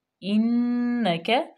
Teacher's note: نون مشدد، کاف لہاتیہ میں سے باریک